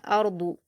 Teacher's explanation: زلزلت الارض، حمزہ پر حرکت جلد پڑھیں گے، را پر جزم ہے تو پر پڑھا جائے گا کیونکہ را پر جزم ہے اور اس سے پہلے حمزہ پر زبر ہے، اس لیے را ساکن کو پر پڑھا جائے گا۔ اور ضاد پر حرکت جلد پڑھیں گے اور پر پڑھیں گے۔